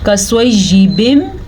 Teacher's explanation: काफ बारीक पढ़ा जाएगा